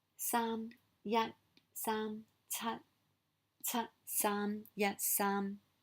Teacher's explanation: Those are all really high tones, so your voice is always at the very top